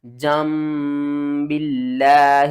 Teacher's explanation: یہاں پر بہت سے لوگ لفظ اللہ کو موٹا پڑھتے ہیں، لفظ اللہ سے پہلے دیکھیں با کے نیچے زیر ہے تو لفظ اللہ کو آپ نے باریک کر کے پڑھنا ہے۔